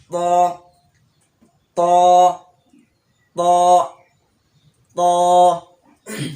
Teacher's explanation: ত উচ্চারণ করার সময় জিহ্বার আগা সামনের উপরের দুই দাঁতের গোড়ার সঙ্গে লাগবে